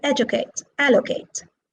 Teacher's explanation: these are verbs and they are stressed on the first syllable